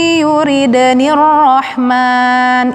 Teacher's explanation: nun mati bertemu dengan ya, dengung, nunnya tidak dibaca langsung masuk ke ya, idgham bi ghunna, masuk dengan dengung.